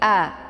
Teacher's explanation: posisi makharij dari huruf a ini tepat berada di bagian bawah tenggorokan